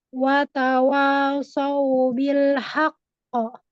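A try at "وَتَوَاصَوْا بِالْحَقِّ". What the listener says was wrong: Ini wa di sini pun tidak, mulutnya nggak bulat itu sayangku. Watawa, watawa.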